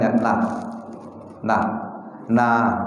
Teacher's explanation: Jangan terlalu ditekankan secara kuat seperti lam. Huruf na itu dia tetap ke langit-langit bagian atas tapi tidak ditekankan kuat seperti lam.